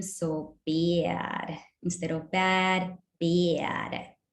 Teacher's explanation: Lowering the lower vowels in the vowel space even more. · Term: vowel lowering